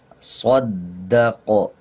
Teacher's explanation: صاد دال زبر صاد، دال زبر دا، صد، قاف زبر قا، صدق، وقف صدق، صدق۔ دال پہ شد ہے، دال کو صاد کے ساتھ ملا کے پڑھا جائے گا۔ آگے قاف ہے، جب قاف پہ وقف کریں گے تو قاف پہ قلقلہ ہوگا، زبر کو سائلنٹ کر دیں گے۔